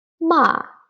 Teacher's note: It's like from 5 to 1. Ma, the falling tone.